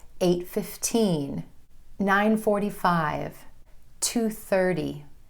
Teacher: if you're sharing a time, you want to make sure your emphasis again falls on those final numbers.